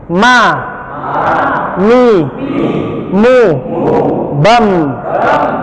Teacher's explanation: ma seperti ba, yang juga dia keluar dari pertemuan dua bibir atas dan bawah